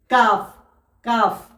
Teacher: কাফ উচ্চারণ হয় আপনার কফ যেখান থেকে উচ্চারণ হচ্ছে তার একটু আগের অংশের সাথে লেগে উচ্চারণ হয়।